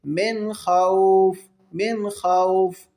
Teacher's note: وآمنہم من خوف، اب یہاں پر اخفا نہیں ہوگا، نون ساکن کے بعد خا ہے، حروف حلقی میں سے حرف کوئی آئے تو وہاں پر اظہار کر کے پڑھیں گے